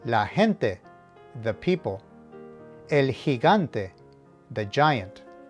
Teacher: vowels E and I, it has an H or soft sound